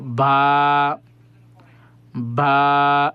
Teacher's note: দুইটা ঠোঁট প্রথমে বন্ধ থাকবে, তারপরে খোলা হয়ে যাবে উচ্চারণের সাথে